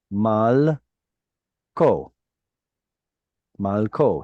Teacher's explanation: So if I want to say his king, that vowel shows up. Well, it actually takes a shorter form because it's now in an unstressed syllable